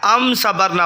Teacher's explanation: یہ دیکھیں ام کی جو میم ہے، میم کے بعد صاد ہے، میم کے بعد اگر صاد یعنی با اور میم کے علاوہ لفظ آ جائے تو وہ اظہار شفوی کا قاعدہ ہوتا ہے، اس لیے غنہ نہیں کیا جائے گا۔ ام صبرنا پڑھیں گے، ام صبرنا نہیں پڑھیں گے۔